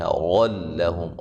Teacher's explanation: را کو موٹا ادا کریں گے